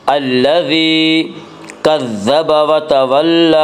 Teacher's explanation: اب یہاں وقف کریں گے، پھر ہوگا لا يصلاها الا الاشقى الذی کذب وتولى، الذی یا مدہ وہ یا جو ساکن ہو اور سے پہلے زیر ہو یا مدہ کو ایک الف کے برابر کھینچ کر پڑھیں گے